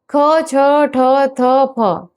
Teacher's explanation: ख, छ, ठ, थ, फ सभी अघोष महाप्राण ध्वनियां हैं।